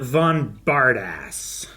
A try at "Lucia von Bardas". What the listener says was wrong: Bardis. There's no two S's. No, it's not a Bard ass.